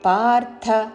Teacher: పార్థ థ హ్రస్వము కాబట్టి పొడిగించకూడదు